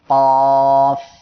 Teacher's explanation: এই অক্ষরটি জিহ্বার গোড়া তার বরাবর উপরে তালুর সঙ্গে লাগিয়ে দুই নুক্তাওয়ালা কফ উচ্চারণ হবে এমন। এই অক্ষরে 3 আলিফ টান হবে।